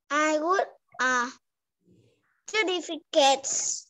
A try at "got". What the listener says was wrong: Nhưng từ này mình sẽ không đọc là good, được chưa? Mình sẽ đọc là got. Đúng rồi, từ got nó có nghĩa là nhận được hoặc là có cái gì đó, được chưa con?